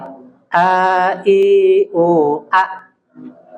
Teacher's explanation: Hamzah itu berhenti di tenggorokan kita